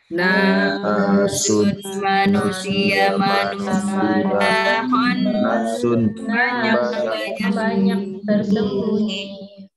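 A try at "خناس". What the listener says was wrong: Ya, panjang ya. Khonna, panjang. Khonnasun yang banyak bersembunyi.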